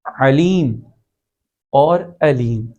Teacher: عین گلے کے درمیان والے حصے سے، جبکہ حمزہ گلے کے آخر والے حصے سے جو سینے کے قریب ہے وہاں سے ادا ہوتا ہے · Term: قریب المخرج